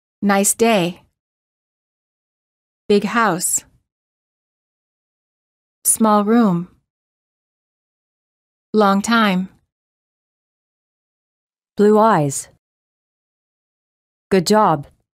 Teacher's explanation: adjective plus noun stress the noun